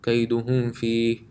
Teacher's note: After meme sakin there's a fa. It's not a meme, it's not a ba, so it will be read normally. كيدهم فيه. There will be no ghunna.